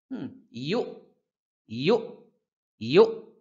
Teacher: এই হামজার উচ্চারণটাও কিন্তু করতে হবে। ইউ, হঠাৎ থেমে যেতে হবে